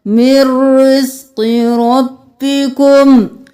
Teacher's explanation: من نہیں کرنا، مر کرنا ہے